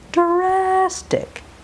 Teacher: The vowel gets all the length. The tongue rolls back or curls back for the R, and it does not touch the top of the mouth.